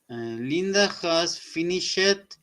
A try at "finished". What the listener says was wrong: sorry again, not finish it. Finished. Say with me. Finished.